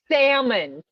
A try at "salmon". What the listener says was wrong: You don't pronounce the L.